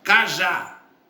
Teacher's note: Cajá, sílaba tônica, já, última sílaba. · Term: oxítona